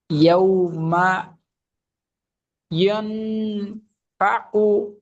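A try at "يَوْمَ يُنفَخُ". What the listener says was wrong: ইয়ান না, ইউন, ইয়া নুন পেশ, ইউন।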